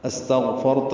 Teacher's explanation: را ساکن پر پڑھیں گے اور اس میں صفت تقریر ہوتی ہے، مکرر ہے یہ. استغفرت لہم، تا کو جلدی ادا کرنا ہے، لام جلدی باریک پڑھیں گے.